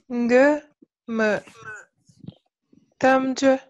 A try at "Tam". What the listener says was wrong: Monte un peu plus ici. Tam.